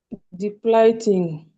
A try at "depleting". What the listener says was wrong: Depleting, everybody. Yes, you never read this as I. This is always E, okay? So this is E. And this is what? I. But sometimes you can read this one E or I. But this one is always E, okay?